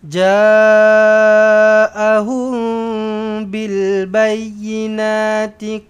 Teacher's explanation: Ha maka inilah kita panggil dengan mad wajib muttasil. Jaahum bil mim kosong bertemu dengan ba ikhfa syafawi dengung dua harakat